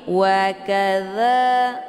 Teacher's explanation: dza dibaca panjang 2 harokah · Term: mad tabi'i muqaddar